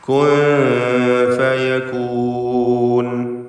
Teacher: കുൻ എന്ന സാക്കിനത്തായ നൂൻ ഇഖ്ഫാ ഹഖീഖി നൽകി മറച്ചു മണിക്കുക